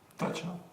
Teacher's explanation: all the R's at the ends of the words are silent, as in teacher or Thatcher